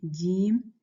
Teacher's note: you're using the middle of your tongue, jim, against your hard palate in the mouth.